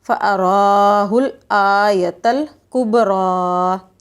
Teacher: را کو ہم موٹا کریں گے، ٹھیک ہے، اور تھوڑا سا ہم لمبا بھی کھینچیں گے کیونکہ اس کے اوپر کھڑی ہے، بالکل ٹھیک، فَأَرَاهُ الْآيَةَ الْكُبْرَىٰ،